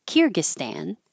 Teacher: I have always put stress on the first syllable like kirgistan but it can also go on the end kirgistan